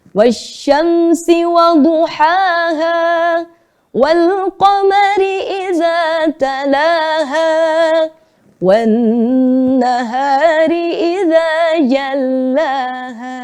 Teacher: nada yang pertama naik, nada yang kedua miring, Nada yang ketiga turun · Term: irama Hijaz